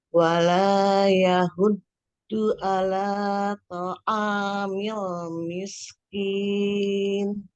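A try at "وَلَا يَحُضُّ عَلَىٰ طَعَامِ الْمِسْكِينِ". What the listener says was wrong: Wala yahuddu. Huruf dhad ya. Hurufnya tebal. Bukan yahuddu, bukan dal, tapi huruf dhad. Wala yahuddu ala, tapi dia pendek ya bunyinya. Jadi huruf dod itu sisi lidahnya ada di geraham atas ya.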